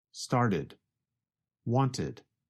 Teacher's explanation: you can hear the extra syllable id